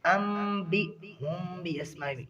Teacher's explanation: انبئہم باسمائہم یہاں پر اقلاب ہو رہا ہے. بی ہم نہیں پڑھیں گے, یہاں پر جو حمزہ اسے جھٹکے کے ساتھ ادا کریں گے. باسمائہم اس میں مد متصل ہے.